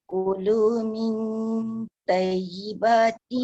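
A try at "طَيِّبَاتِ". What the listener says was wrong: Toy, toy. Dia bukan tai. Toy. Toy.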